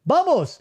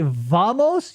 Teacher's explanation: V's are typically pronounced as B's.